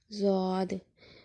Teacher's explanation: اس کی آواز دال کی آواز کے ساتھ ہرگز نہیں ملتی، کیونکہ دال میں زبان کی نوک دانتوں کے ساتھ ٹچ ہوتی ہے، جبکہ ضاد میں زبان کی نوک کسی جگہ ٹچ نہیں ہوتی